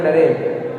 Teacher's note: आप जब उच्चारण कीजिएगा तो अपने हाथ को अपने मुंह के सामने रखिएगा, बोलिएगा नरेंद्र। जब नरेंद्र बोलिएगा तो आपके अंदर से कोई भी तेज हवा नहीं आएगी